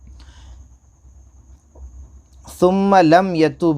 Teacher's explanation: नून और मीम पर तस्जीह तो गुन्ना होगा